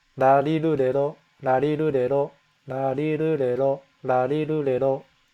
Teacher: I'm kind of flicking the tongue off the top of my teeth, the top part. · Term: R series